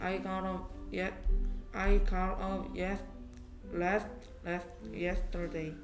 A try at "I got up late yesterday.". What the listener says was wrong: A가 A 소리에서 여기까지 L A가 lay 되고 T가 T 소리였는데 왜 자꾸 last가 돼? Last가 되게 late. I got up late yesterday.